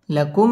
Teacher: লাকুম মিম সাকিনে ইজহারে খাস গুন্না ছাড়া পড়তে হবে মধ্যে এক আলিফ টানে পড়তে হবে মিম সাকিন ইজহারে খাস গুন্না